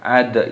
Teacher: dalnya sukun dimatikan dan diqalqalah, dipantulkan suaranya. Ad itu namanya qalqalah, de itu namanya qalqalah, pantulan suara.